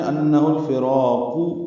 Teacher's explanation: را کو دو حرکات ہی لمبا کرنا ہے اور قاف کی پیش کو معروف طریقے سے پڑھنا ہے